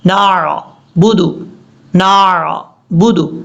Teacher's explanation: نون کے بعد عین کو چھوڑ دیتے ہیں، ایسا نہیں کرنا